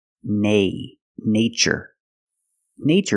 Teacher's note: in the first word we use the long a like day and say